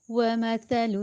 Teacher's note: واو کے لیے ہم نے ہونٹ گول کیے، متحرک ہے۔ زبر کے لیے ہونٹ کو اوپر کی طرف کھولا، صرف ظاہر کیا، لمبا نہیں کیا۔